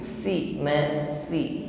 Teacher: Sin yang sifatnya sofir, desis menyalir dengan diiringi sifat istifal, lidahnya tetap di bawah sehingga bunyinya tipis